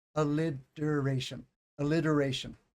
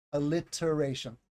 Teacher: Some people will say alliteration, alliteration, with a D sound. You don't have to. You can say a T sound. That's standard pronunciation.